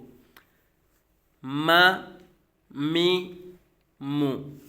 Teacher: मीम दोनों होठों के खुश्क हिसा से अदा होता है